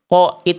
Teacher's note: Qo bukan karena kita mengerucutkan bibir, tetapi karena tebal.